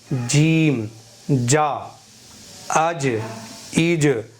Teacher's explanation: سمجھیے گا یہاں پر جیم حروف مستفیلہ میں سے ہے، یعنی باریک پڑھنا چاہیے. مخرج کیا ہے زبان کا بیچ، یہ اوپر کے تالو پر لگائیں گے.